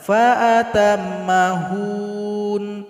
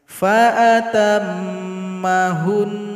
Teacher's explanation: Jadi nun di sini kita sukunkan lalu dengungkan 2 harokat. Fa'atam mahun, jadi bunyinya kita lebihkan.